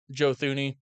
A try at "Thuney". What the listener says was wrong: I believe the H is silent. Tooney. I don't think it's Thuney.